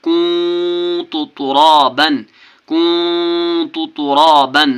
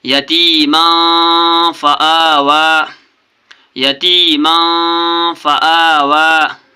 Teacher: 2 زبر کے بعد کاف ہے، میم الف 2 زبر من، یہ تنوین ہے، تنوین کے بعد کاف ہے، کاف حرف اخفا ہے، اس لیے یہاں پر اخفا کرنا ہے، نون کی آواز کو ناک میں چھپا کر پڑھنا ہے۔